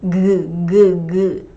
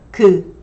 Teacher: these Korean consonants do not vibrate as much as English consonants